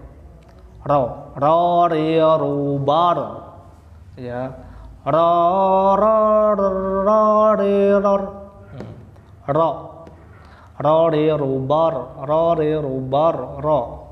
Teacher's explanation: huruf ro ya bukan banyak getaran. Ar motor ya, tapi cukup 1 kali getaran halus takrir.